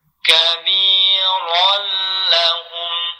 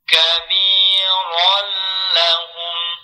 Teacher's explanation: Tanwin bertemu huruf lam, hukumnya idgham bila gunnah. Yaitu memasukkan bunyi tanwin ke huruf lam. Oke. Disertai menahan bunyi huruf lam.